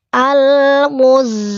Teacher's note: Rasakan dengungannya masuk ke hidung. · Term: tahan dengung